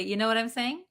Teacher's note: So instead of saying you, we're going to pronounce it as ya. Okay, this is very common almost for all of the times we say you, it's going to change to yah.